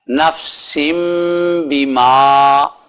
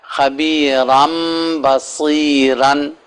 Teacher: نفسن کی بجائے نفسم بما، اور خبیرن کی بجائے خبیرم بصیرن